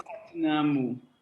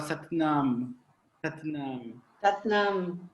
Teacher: Não importa qual é a vogal curta que aparece no final, ela acaba sempre virando um leve mukta ali.